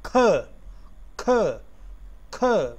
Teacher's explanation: stop mean oral passage is stopped and here it is going to be stopped with the help of the back part of the tongue touching the upper palate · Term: stop sound, K sound